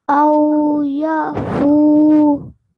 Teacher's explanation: when we're pausing, very simply, the fatha will take a sukoon on the waw, and it will be read as aw ya'fu, 2-second prolongation